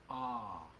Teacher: I'm not moving anything. So that is a pure vowel sound.